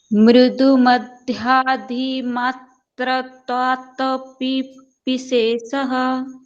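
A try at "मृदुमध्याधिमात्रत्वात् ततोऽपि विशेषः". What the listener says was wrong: See, some of you are not pronouncing matratvat. Matratvat is there, right?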